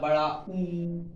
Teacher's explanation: जैसे हमने बड़ा ऊ बोला, बड़ा ऊ, तो उसमें क्या है हमारे जो मुख की आकृति है वो कैसी हो गई, गोल हो गई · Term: वृत्ताकार या गोलाकार स्वर